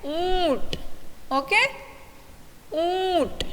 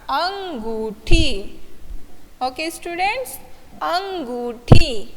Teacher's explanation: अनुनासिक क्यों कहा है इसे? क्योंकि इनका उच्चारण नाक के द्वारा होता है